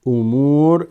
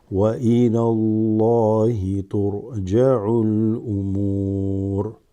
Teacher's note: the meme is extended by the waw slightly